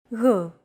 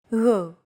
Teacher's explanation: your tongue and the back part of your mouth should be barely separated from each other while you blow a steady stream of air between the small separation. Another approach is to try to pronounce a G as if an H sound were to follow after it and hold that sound while you exhale. · It's like a very soft, continuous, and loosely held G, almost as if you're gargling, but don't make it sound too throaty. Γ. There's no such sound in English, but most people would transcribe this using the letter G because that's the closest equivalent in English.